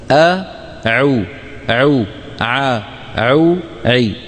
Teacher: العين من وسط الحلق يعني اعلى ا عو ا عو لاحظتم العين الفصيحه لابد فيها من رجوع لسان المزمار الى الوراء قليلا